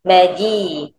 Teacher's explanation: Huruf jim angkat tengah lidah biar sentuh dengan la langit. Tekan sikit maji.